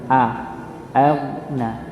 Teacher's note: Walaupun dalam keadaan sukun dia tetap tebal. Hamzahnya yang tipis, ghainnya yang tebal. Aghna. Aghna bukan agna atau agna.